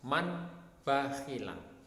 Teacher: nun sukun atau tanwin ini diganti dengan suara huruf mim Bagaimana cara membacanya membacanya harus dengan mendengungkan suara contohnya adalah man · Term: iqlab